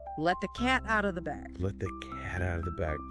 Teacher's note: when you say it, put the emphasis on cat.